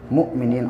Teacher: حمزہ ساکنہ کو جھٹکے کے ساتھ پڑھتے ہیں